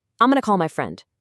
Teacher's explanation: the key words call and friend, they still get that pop of stress